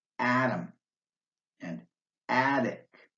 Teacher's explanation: The letter T is pronounced like a light D sound at the beginning of an unstressed syllable in words like atom and attic.